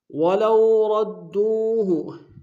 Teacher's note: ولو میں واولین ہے بغیر کھینچے پڑیں گے · وَلَوْ رَدُّوهُ إِلَى الرَّسُولِ، الر میں لام کو را کے سامنے آئیں گے، را کے اوپر شدہ زور دیں گے، دونوں را کو موٹا ادا کریں گے، سو میں واو مدہ ہے، ایک اسم میں کھینچیں گے۔